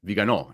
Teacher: the emphasis is on the last syllable